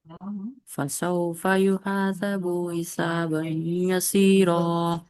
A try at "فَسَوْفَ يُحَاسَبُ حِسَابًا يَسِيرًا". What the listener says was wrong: یہ با کھینچے گیا، دیکھیے با نہیں کھینچے جانا.